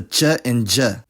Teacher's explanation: they fully affricate those plosives to che and je.